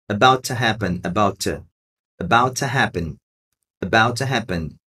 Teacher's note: esse T do about vai sumir, porque nós temos um outro T ali. E esse about to vai ser um to bem curtinho. About to happen.